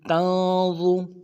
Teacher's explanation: نون ساکن میں غنہ کریں گے، اور ضا کو موٹا ادا کریں گے